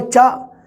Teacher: ਸੁਰ ਨੂੰ ਧੱਕਾ ਜਿਹਾ ਹੀ ਲੱਗਿਆ ਇੱਕ ਚਾਹ।